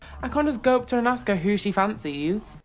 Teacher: to be honest this is a very british way of speaking notice with the intonation and the emphasis it's very musical she goes up and then down